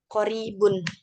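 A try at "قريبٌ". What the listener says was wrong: Betul koribun.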